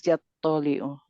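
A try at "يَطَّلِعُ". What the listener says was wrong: So this one also has a shadda on the door.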